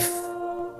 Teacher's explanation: আমি যখন আলিফ বলছি এর মধ্যে কোন টান হবে না।